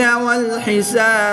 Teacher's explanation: یہاں پر وقف کی حالت میں با ساکن ہوگا، اس لیے ہم یہاں پر بھی قلقلہ کریں گے